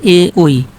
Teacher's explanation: এগুলোর উচ্চারণ স্থান কোথায়? কন্ঠ ও তালু। আর এগুলোকে বলা হয় কন্ঠ ও তালব্য বর্ণ।